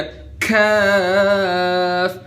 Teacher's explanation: sifat huruf Kaf keluar ada aliran udaranya sampai-sampai pas kita lagi ada kertas disini terbang Kai Kesalahan kedua